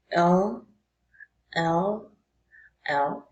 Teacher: the place of the articulation is alveolar i'll build that okay the manner of articulation is lateral lateral and the sound is voice